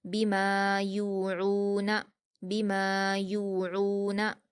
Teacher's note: मीम पर अलिफ मद्दा है 2 हरकत खींचकर पढ़ेंगे। या पर वाव मद्दा है 2 हरकत खींचेंगे। आइन पर भी वाव मद्दा है से भी 2 हरकत खींचकर हलक से अदा करेंगे।